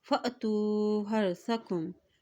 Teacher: حمزہ کے پر جزم ہے تو یہاں پہ جھٹکا دے کے ادا کریں گے